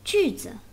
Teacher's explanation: 句 is a fourth tone, then the neutral tone is the lowest one, as low as 1.